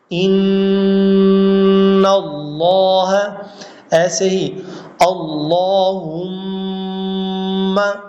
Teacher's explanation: تو ان، یہ جو آواز ہے نا ان، یہ خیشوم کی آواز ہے، اور اس سے پہلے جو نون کا مخرج ہے نون، وہ اس کا اپنا مخرج ہے. نون کو اپنے مخرج سے ادا کرنا، اور ایک الف کی مقدار ناک میں آواز چھپا کر ان اللہ، ایسے ہی اللہم، یہاں بھی جو ہے ناک میں آواز چھپائی جا رہی ہے. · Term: غنہ